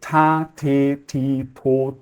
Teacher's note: o t ele é um pouquinho mais assim com um pouco de ar tá então ele não é super surdo igual ele é no português